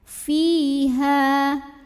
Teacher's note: Cara membacanya dipanjangkan ha-nya 2 harokat. Fiha. Dan ini berhenti ataupun tidak hukumnya tetap mad tabi'i ya.